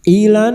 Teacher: lam takrif yang bertemu nun idgham syamsiyah ilan masuk pada huruf nun dan mendengung selama tiga harakat ilan Na fathah diguti alif dua harakat mad thabi'i.